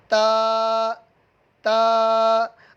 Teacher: تا کو تا، دال اور طا، ان تینوں کا ایک ہی مخرج ہے، ان تینوں کا ایک ہی مخرج ہے، اور ان کا نام ہے حروف نطعیہ، ان کا نام ہے حروف نطعیہ۔ زبان کی نوک اور اوپر کے دانتوں کی جڑ سے یہ تا ادا ہوتا ہے